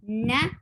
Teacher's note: tip of the tongue and touching the gum of the upper two teeth